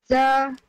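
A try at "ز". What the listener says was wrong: Should be more harder.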